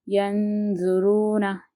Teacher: دیکھیے نون ساکن کے بعد کیا ہے، ذو ہے، تو ذو کیا ہے، حرف اکفا میں سے ایک حرف ہے، تو ہم نون کو کیا کریں گے، آواز ناک میں لے کے جا کر ایک الف کے برابر چھپا کر پڑھیں گے